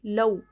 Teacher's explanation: वाव साकिन से पहले ज़बर वाउलिन, नर्म आवाज़ के साथ जल्द अदा करेंगे।